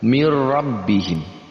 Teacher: antara tanwin dan lam di situ adalah tapi digabungkan tanpa dengungkan kita gabungkan tapi tanpa dengung nah ini dinamakan dengan Idgham bilagunnah kita gabungkan tapi tanpa dengung · ketika ada nun mati atau tanwin bertemu dengan lam ataupun huruf ro maka digabungkan tapi tanpa dengung